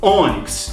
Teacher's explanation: eu falo ônix, ó, o O é o mais forte, é a penúltima sílaba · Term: paroxítona